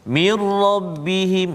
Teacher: Yang kedua contohnya nun mati bertemu dengan ra, mir rabbihim, hilang terus bunyi nun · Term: idgham kamil